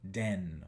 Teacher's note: La D se hace en el mismo lugar que la T.